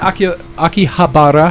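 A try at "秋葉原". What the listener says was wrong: Akihabara. You don't roll your R's.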